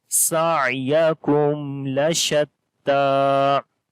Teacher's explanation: After the mim sakin you can see there is lam, so we make izhar shafawi here, like the clear sound of mim, and this ta we long due to standing fatha on it.